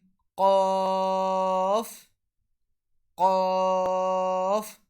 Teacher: Qaf is pronounced when the very extreme back of the tongue touches the palate close to the uvula. So Qaf is pronounced when the end of our tongue, which is close to our throat, touches the end of our backside of our palate.